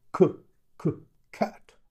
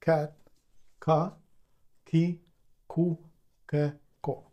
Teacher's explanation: we don't make a lot of aspiration it's not like English c c cat no it's cat k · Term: no aspiration